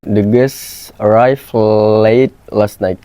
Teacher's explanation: In Bahasa Indonesia, complex consonant clusters at the end of words are rare. Therefore, when faced with the cluster in guests, the speaker might simplify it by omitting the t sound to conform to more familiar phonotactic patterns. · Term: omission